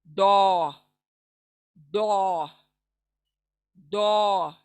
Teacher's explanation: जबान का किनारा दाढ़ों के ऊपर मसूड़ों को लगेगा